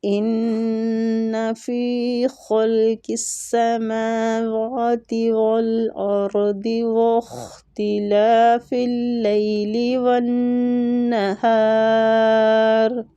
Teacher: ان نون مشددہ غنہ کریں گے، فی یا مد کے ساتھ ہے، فی کو کھینچیں گے